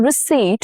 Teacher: Here, P is silent. English borrowed this from French, and the P stayed in spelling but disappeared in sound.